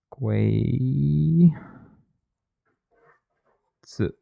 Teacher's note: I pronounced that with like a rising sort of questioning accent on the Gui and like almost a 4th tone on the Z